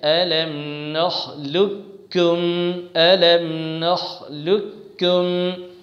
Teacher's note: پہلے والے قاف کو مکمل طریقے سے کاف سے بدل دیا جائے اور کاف کا کاف میں ادغام کر دیا جائے، یعنی ایک ہی کاف مشددہ پڑھا جائے، جیسے أَلَمْ نَخْلُقكُّمْ أَلَمْ نَخْلُقكُّمْ۔ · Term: ادغام تام